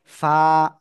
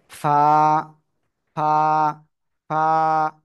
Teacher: নিচের ঠোঁটের পেট উপরে দুই দাঁতের সাথে লাগাবেন লাগিয়ে এক আলিফটা নিয়ে উচ্চারণ করতে হবে ফা হালকা বাতাস বের